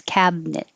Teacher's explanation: instead of cabin net you can get rid of the middle it and just have two syllables